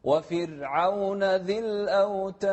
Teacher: لا الحين في ناس تفخمها. أي كلمة فرعون بالقرآن دائما الراء مرققة.